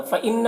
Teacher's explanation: نون مشدد ہے، غنہ ہوگا